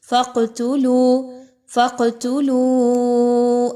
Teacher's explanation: قاف پر قلقلہ کیا جائے گا، یعنی قاف کی آواز کو تھوڑا سا ہلا کر پڑھیے